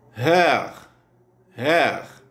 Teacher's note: Le E de Herr est très ouverte, proche du E du français.